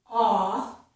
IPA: ɔ